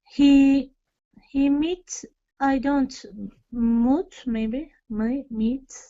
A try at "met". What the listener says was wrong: It's a vowel change. vowel shortens. So met. Meet, met.